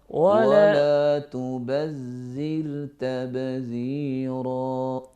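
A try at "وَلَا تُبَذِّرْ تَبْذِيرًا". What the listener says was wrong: زال کو باریک پڑھنا ہے، اس کو موٹا نہیں پڑھنا۔ ولا تبذر تبذیرا، غور کیجئے گا، ولا تبذر، را موٹی ہوگی، ولا تبذر تبذیرا۔ اب دوبارہ پڑھیے،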